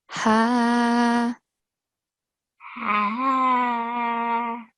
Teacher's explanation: for small ha, the sound is coming from the bottom of the throat, close to the chest